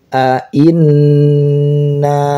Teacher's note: A inna nunnya bertasydid maka harus ditahan